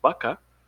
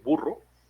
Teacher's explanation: tendemos a pegar eh, nuestro labio como con los dientes, a diferencia de la B de burro, que es con la boca más como hacia adelante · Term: labio dental